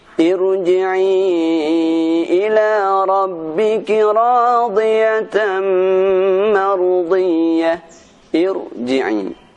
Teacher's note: huruf ra yang dibaca dengan tebal walaupun sebelumnya berupa huruf kasrah, yaitu pada huruf ra yang didahului dengan hamzatul wasl seperti di surah Al-Fajr ayat 28 yang berbunyi Irji'i ila rabbiki radiyatan mardiyah.